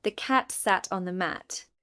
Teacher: Tap on cat and mat. The other words are said quickly.